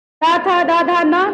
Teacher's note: मेरा जीभ पहली बार किधर गया? दोनों दांत के बीच में। तो यानी ये हो गया दंत।